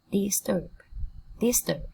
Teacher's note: Trọng âm cũng rơi vào tiết thứ hai.